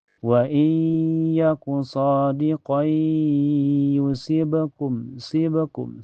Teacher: tanwin nasabnya dimasukkan ke ya dan ditahan sampai terasa ke hidung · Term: idgham bi gunnah